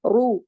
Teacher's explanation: را کو موٹا پڑھیں گے، رو پیش، واو رو پیش کی وجہ سے